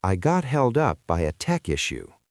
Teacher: Notice how the voice drops a little bit at the end of the sentence to show that the issue is over and resolved.